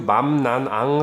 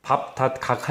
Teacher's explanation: 맘, 난, 앙 할 때 콧속이 울린다는 거는 코에 손을 대보면 느낄 수가 있거든요. 밥, 닷, 각 할 때는 코가 그렇게 울리지 않거든요.